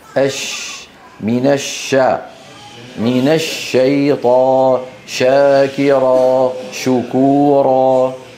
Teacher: انتشار صوت الشين من مخرجه حتى يصطدم بالصفحه الداخليه للاسنان العليا والسفلى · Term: التفشي